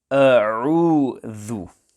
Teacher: When pronouncing the word a'udhu, it is important that the hamza and the ain are pronounced clearly and separately. At times, some pupils pronounce the letter hamza as ain and say a'udhu, or the ain is pronounced as hamza, a'udhu, etc.